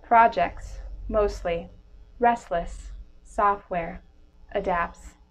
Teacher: drop the T in between consonants within words